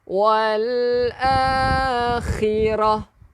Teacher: bila kita berhenti untuk tak marbutah, dia tak boleh bunyi wal akhirat. Tetapi kita bunyikan ha.